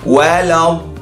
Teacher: Mat lazim kalimi musaqqal bersyaddah dan yes, dibaca secara idgham.